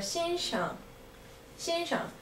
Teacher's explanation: 生 is first tone, but when it's with 先生, it's a neutral tone